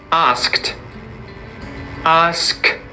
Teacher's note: when you have a word that ends in a consonant that isn't voiced, there's no vibrations in the throat, the sound that you have to use is an unvoiced consonant, t. Unvoiced ending, unvoiced consonant, t.